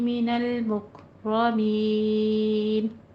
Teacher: मिनल मुकरमीन काफ पे हमस करना है। रॉ को पुर पढ़ना है।